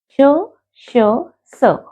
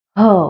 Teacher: और अघोष जिसमें वो ध्वनि, वो कंपन नहीं पैदा होती। जैसे श, श, स, आराम से हो गया है ना। ये है आपके अघोष। ह, हमारा एक जोर लगा कंठ का, ह, एक हल्की सी कंपन आई, ये है आपका घोष वर्ण।